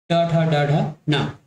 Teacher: मुंह के जो ऊपरी वाला दांत का जो हिस्सा है, जहाँ रूट है ना, दांत का रूट है, उसके हल्का ऊपर आपका जीभ जाके टकरा रहा है, उसको हम कहेंगे मूर्धा स्थल, ट ठ ड ढ न, ठीक है।